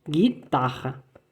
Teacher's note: Olha que o RR, se o R já é gutural, imagina o RR. O RR é mais gutural ainda.